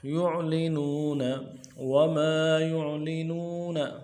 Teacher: وما يعلنون یا کو عین کے ساتھ ملانا ہے، عین میں آواز جاری رہے گی، عین کو موٹا کریں گے۔ لام کو نرم سے ادا کریں گے، نون کو واو مدہ کے ساتھ ملانا ہے، نون واو مدہ میں ایک الف دال میں کھینچیں گے۔